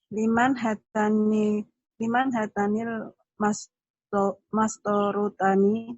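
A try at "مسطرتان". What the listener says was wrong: Bukan mastoro. Adanya mistoro.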